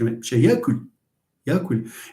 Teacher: It's a k that is a voiceless velar stop, but at the same time you are rounding the lips. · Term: labialization